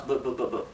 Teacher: unfortunately for many years already officially the sound of V and bay are the same